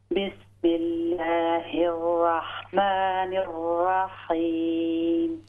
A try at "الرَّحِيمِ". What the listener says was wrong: را کو لمبا نہیں کرنا, رحیم نہیں کرنا, یس, اور موٹی ہوگی را پر, رحیم. ہاں جی, ادھر بھی راک ہونا ہے نا, تھوڑا سا موٹا کر لیں,